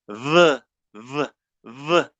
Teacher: you need to put your lower lip in combination with your upper teeth. Lower lip with upper teeth. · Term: fricatives